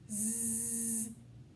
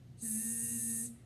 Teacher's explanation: If I check that sound, Z, I do feel the vibration on my voice box. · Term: buzzy sound